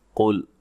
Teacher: قاف کو موٹا ادا کرنا ہے، لام کو ہلانا نہیں ہے